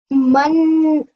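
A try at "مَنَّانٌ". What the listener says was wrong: Can you see how I took my time when I was joining the two letters together? How my sound was longer than about 2 seconds.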